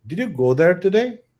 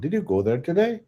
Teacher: As you can see the last part I'm making a high pitch sound.